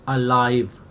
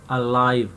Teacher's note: यहाँ पे जो ए है, ए लेटर ए, ये श्वा साउंड प्रोड्यूस कर रहा है